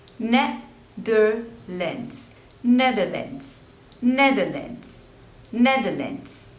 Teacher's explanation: There are 3 syllables and the stress is on the first one.